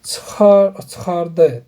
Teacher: çıxardı deyirəmsə, D-nın üzərinə salıram mən burda vurğunu.